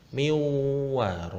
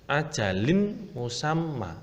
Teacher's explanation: langsung dimasukkan dengan mendengung sedikit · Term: idgham bi gunnah